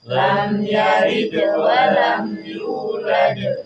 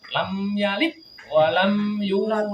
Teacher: jadi dalnya mantul tapi tidak tambahan hamzah